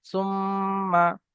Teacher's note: মিমের উপর তাসদিদ আসছে, ওয়াজিব গুন্না একালি পরিমাণ গুন্না করে পড়তে হবে। তা মিম পে সুম, মিম জাবার মা, সুম্মা।